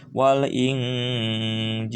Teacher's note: setiap nun sukun atau tanwin menghadapi jim maka harus agak didengungkan. Wal Injil panjang karena ya sukun sebelumnya kasroh dan ada huruf yang sukun karena waqaf.